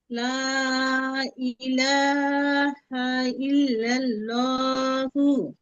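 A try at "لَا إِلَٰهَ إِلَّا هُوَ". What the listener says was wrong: ইল্লাল্লাহ কোথায় পেলেন আপু? আছে কি এখানে? ইল্লাহু, ইল্লাহু।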